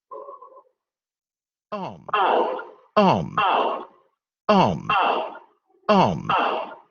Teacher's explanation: Se escucha mucho más brillante el sonido, vamos a decirlo así, cuando no hay labialización, que cuando está la labialización. La labialización como que oscurece o opaca la calidad del sonido.